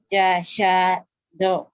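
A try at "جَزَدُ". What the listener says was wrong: Bukan jasa ya. Z ini. Jazado.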